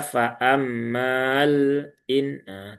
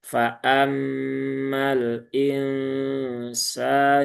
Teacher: Jadi kalau dipisah dia panjang, kalau disambung e dia alifnya hilang ya. Alifnya dihazfkan ya, dibuang tidak dibaca, diisqot.